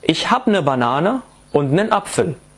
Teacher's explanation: فعل haben اللي هو بهالحالة habe صار hab لأنه بينتهي ب a schwa